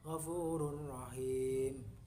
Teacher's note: bunyi nun mati atau tanwin dilebur atau dimasukkan ke dalam huruf yang menyambutnya tanpa berdengung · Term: idgham bila ghunna